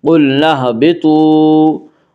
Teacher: قلنا اهبطوا میں قاف اور طا دونوں کو پر پڑھیں گے، کیونکہ یہ دونوں حروف مستعلیہ میں سے ہیں۔